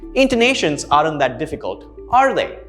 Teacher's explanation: notice how i am clarifying with you and it's a yes or no question therefore the intonation rises